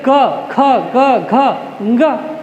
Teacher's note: ये कंठ से साउंड आता है